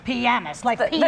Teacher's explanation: The emphasis is on the first syllable.